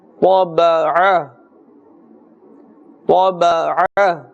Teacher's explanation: Ain, the sound comes from the center of the throat.